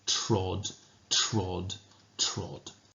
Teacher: the repeated use of that t sound the dental plosives are being used almost like the sound of metal striking metal which Echoes that industrial sound the world is no longer filled